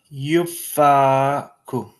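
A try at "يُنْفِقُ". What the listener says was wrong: Ooh, you missed one. Which one? Second letter.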